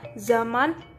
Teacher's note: Konsonan frikatif alveolar bersuara Z diucapkan sama dengan konsonan isi. Di sini pita suara bergetar sedangkan pada S tidak.